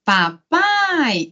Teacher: o A é vogal, o I é semivogal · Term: ditongo